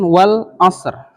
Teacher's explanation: Al-Qamariyah, betul. Kenapa Al-Qamariyah? Lamnya dibaca jelas ya